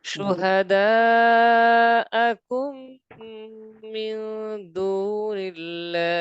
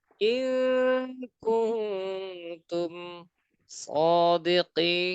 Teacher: মিম সাকিনের পর মিম আছে গুণ হবে